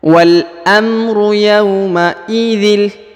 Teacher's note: Wal amru yauma idzil. Kemudian huruf dhin ya langsung melebur ke huruf la sehingga huruf dhinnya tidak dibaca ya. Yauma idzil ya, harokat tanwin bertemu dengan huruf lam, maka tanwinnya menjadi hilang ya, langsung melebur ke huruf la.